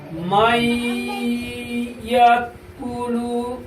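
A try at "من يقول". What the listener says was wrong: তোর গুণা করাটা হচ্ছে না, গুণা করাটা। এই কফের উপরে পেশ, পেশের মধ্যে যত বলো মাদের হরফ, এই মাত্রা মানে পড়ার মধ্যে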